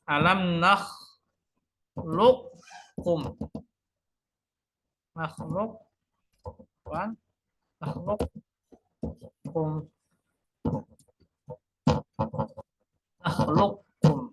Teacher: Nah, bertemu dengan kaf satu makhraj. Nah, dibaca dengan idgham ketika qof bertemu dengan kaf.